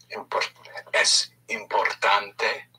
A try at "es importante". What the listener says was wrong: No, you gave me two pushes.